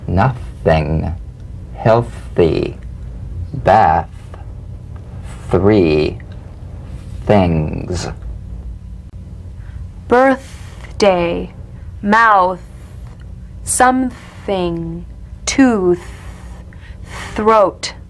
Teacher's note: feel a steady but airless sensation of escaping breath stream now sustain the th in these words nothing healthy beath three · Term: voiceless th